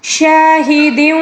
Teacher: وشاہد، وشا، یہاں پر شین الف زبر شا، خالی الف سے پہلے شین کے اوپر جو زبر ہے اس کو خالی الف سے پہلے کسی بھی حرف پر اگر زبر آ جائیں تو اس کو الف مدہ کہا جاتا ہے، ٹھیک ہے۔ الف مدہ، اس کو 1 الف کے برابر کھینچ کر پڑھنا ہوگا